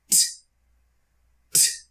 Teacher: You put the tip of your tongue on the roof of your mouth behind your teeth and you push air. If you're only pushing air, you're creating the t sound.